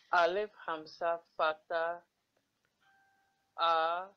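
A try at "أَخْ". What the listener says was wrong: No, do not say Alif Hamza. Look, do not say Alif Hamza Fatta A because here we have Kha with Sukoon. When we have any alphabet with Sukoon, we have to merge it with the previous alphabet.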